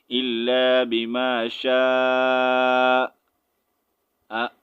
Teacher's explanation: ہلکا سا آپ نے گلے کو روک دینا ہے تو حمزہ کا ساؤنڈ نکل جائے گا